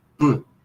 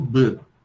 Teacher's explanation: Se você tem, por exemplo, se você põe a mão aqui e pronuncia o som P e o som B, você vai perceber que no P é mais as pregas vocais não vibram, enquanto no B existe uma vibração, assim como F, V.